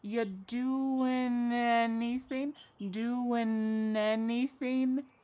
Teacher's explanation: We link together doing because we're going to drop the G. It ends with the sound n, the N sound. And then the next word, anything, we sometimes drop the A and we're going to push those two together because there's two N sounds side by side. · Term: linkings